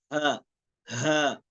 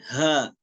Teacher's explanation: Ha juga, itu keluar dia paling bawah.